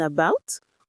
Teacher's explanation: It's that little unstressed uh sound that you find everywhere, like the a in about or the e in teacher. Trust me, spotting the schwa is a true secret weapon on exam day.